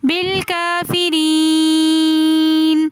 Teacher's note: را کے نیچے زیر آ رہی ہے تو اس لیے ہم را کو باریک پڑھیں گے۔ یا ساکن اس سے پہلے زیر تو ایسی یا مدہ کہلاتی ہے، تو اس لیے ہم یا کو بھی تھوڑا سا کھینچ کر پڑھیں گے